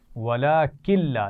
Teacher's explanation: نون ساکن کے بعد لام ہے تو ہم لام سے ملا کر تو پڑھیں گے لیکن غنہ نہیں کریں گے